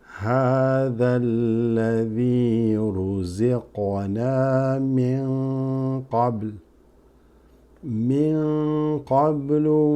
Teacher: this qaf is slightly qalqala